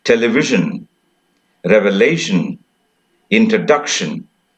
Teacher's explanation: the stress on the penultimate syllable